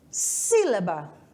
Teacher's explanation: Por exemplo, a palavra sílaba, ela já é com uma acentuada, né? Então, a sílaba tônica é no si, na antepenúltima